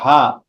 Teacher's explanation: জবরের পরে যদি খালি আলিফ আসে, তাহলে কি এক আলিফ টান। জবরের পরে খালি আলিফ, এক আলিফ টান। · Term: সাধারণ মদ